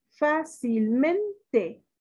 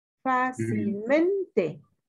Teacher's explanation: ¿Dónde se escucha más fuerte? Sí, en men, es decir, es una palabra grave. Podría ser una palabra grave, sin embargo, aquí es una palabra sobresdrújula porque se mantiene el acento del adjetivo original.